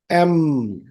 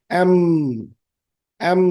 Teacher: এম হচ্ছে একটা nasal alphabet, এটা নাক দিয়ে বাতাস বের হয়, ঠোঁট দুটো একসাথে লাগবে, নাক দিয়ে বেরোবে